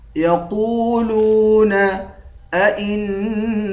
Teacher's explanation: یقولون ائنا، اس والے حمزہ کو نون کے ساتھ ملا کر نون پر غنہ کریں گے، نون کے بعد الف ہے، الف حروف مدہ ہے، ایک الف کی مقدار کھینچیں گے